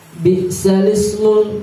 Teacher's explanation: cara membacanya langsung seperti huruf sin itu menopang pada huruf lam atau seperti ditasjid huruf lam. Bi'salismu gitu.